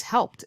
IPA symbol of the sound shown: ɪd